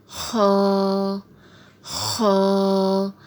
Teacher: خا، حلق کے اوپر والے حصے سے ادا ہوتا ہے، خا۔ آپ دیکھیں تو خا کو بھی کھول کے لکھا ہوا ہے اور اسے بھی ایک الف کے برابر کھینچ کے پڑھیں گے، خا۔